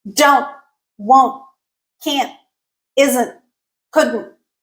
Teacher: All of those ended with the T, and we took away the T, but we added the glottal stop. · Let's move on to rule number 2. In contractions where we have an N, T, the final T changes into a glottal stop.